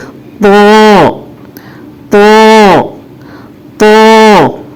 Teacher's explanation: زبان کی جڑ کو اوپر اٹھا کر موٹی آواز میں کہیں گے